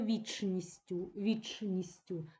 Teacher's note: Так хочеться пом'якшити ч але пам'ятаємо що не пом'якшуємо